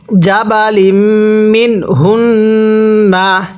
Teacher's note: নুন সাকিনটা স্পষ্ট করে পড়ব, কারণ নুন সাকিনের পরে এরকম হা ইজারে হরফ থাকলে নুন সাকিনটিকে স্পষ্ট করে পড়তে হয়